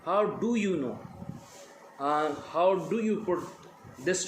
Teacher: because द second word डू is stressed